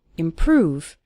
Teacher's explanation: Stress on the second syllable, improve